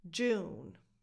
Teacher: You start with a j sound, and then you make a long oo sound, like in the word food.